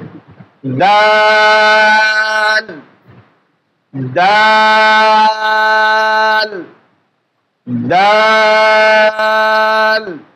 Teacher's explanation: জিহ্বার আগার সামনের উপরে 2 দাঁতের গোড়া আমরা লেগে দেব।